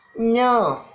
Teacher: Tengah lidah dan langit-langit keras